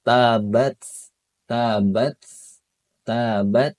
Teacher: Tapi ketika sukun itu harus terdengar ya. Terdengar dan juga terasa nafas yang mengalirnya. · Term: sifat hamsnya